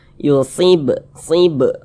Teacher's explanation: kalau dia sukun maka cara membacanya dipantulkan huruf ba Ini kan termasuk huruf Qalqalah nih kemudian dia sukun pantulkan bacanya · Qalqalah kecil Qalqalah sugro karena dia berada di tengah kalimat atau supaya lebih mudah lagi karena dia berada di tengah bacaan